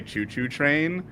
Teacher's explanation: you don't pronounce the T in train like ta it's cha